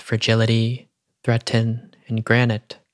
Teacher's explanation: These T sounds are unvoiced, meaning they don't use the larynx when sounded out. The larynx is the muscular organ that contains our vocal cords, and it's almost as if the larynx can't be used, as it were, to stop the danger spoken about in the poem.